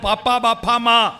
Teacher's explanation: ആ ചുണ്ട് പൂട്ടി തുറന്നിട്ട് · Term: ഓഷ്ഠ്യവും